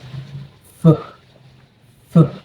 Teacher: the throat is not vibrating while pronouncing the letter F. And you can also feel the air coming out the narrow passage between your teeth and your lips.